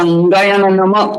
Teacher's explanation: ज्यांचं उच्चारण तोंडासहित नाकाने होतं त्यांना अनुनासिक म्हणायचं